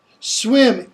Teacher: It's a high front vowel. Okay, it's right after E.